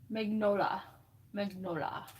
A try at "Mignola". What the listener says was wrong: Yeah, Mr. Carroll said don't say the G.